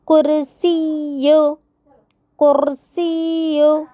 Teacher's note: کاف کے پیش کو مجہول ہونے سے بچاتے ہوئے را کو پر کر کے پڑھنا چاہیے، یا مشددہ کو واضح کرنا ہے۔